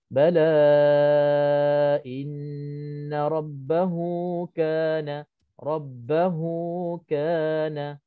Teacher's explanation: kalau bertemu selain daripada huruf hamzah, maka hukumnya mad silah qasirah. Mad silah qasirah. Qadar bacaannya ialah 2 harakah.